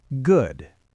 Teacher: It goes down and then scoops back up. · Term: fall rise